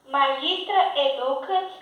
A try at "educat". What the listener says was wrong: No. Non è educat. Tem a bráquia. Acento breve sobre o U, não pode colocar a tônica ali. Deve colocá-lo antes.